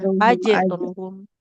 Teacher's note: Nah, iya, jadi jangan Aj, ditekan ujungnya. Kalau ditekan seperti ada hamzahnya.